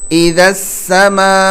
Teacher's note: میم الف مد زبر ما 4 الف کے برابر اس کو کھینچنا ہے